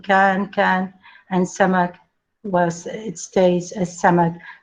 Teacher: Qəltu has also preserved the velar stop k from the Old Arabic